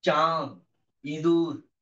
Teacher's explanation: চাঁদ, ইঁদুর, একাদশীর চাঁদ রে ওই রাঙা মেঘের পাশে, এই যে চাঁদ, মানে নাক দিয়ে বাতাস বের হবে না, কিন্তু নাকে একটু আটকাবে, এই জন্য এটা অনুনাসিক বা সানুনাসিক।